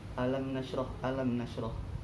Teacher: Ada mim sukun bertemu dengan nun. Apa yang dinamakan idhar syafawi, atau bacaan mimnya dibaca dengan jelas.